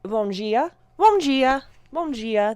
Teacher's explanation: Brazilian, they would say like bom dia, bom dia, bom dia. Their D's have more of a j sound.